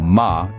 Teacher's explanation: the first syllable ma is pronounced much like the ma in Mama the a sound is short and Punchy not drawn out like in English